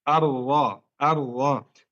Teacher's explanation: التكرير atau التكرار itu bergetar, ujung lidah bergetar saat mengucapkan huruf ra. Bergetar. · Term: takrar